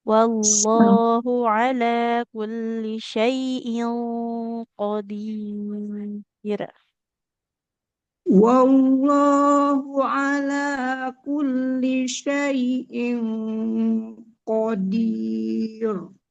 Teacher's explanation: Di sini kan tanwinnya bertemu huruf qof, maka ikhfanya ikut tebal.